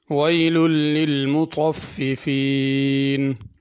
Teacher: مطففین میں طا ہے، اس کو تا نہیں پڑھنا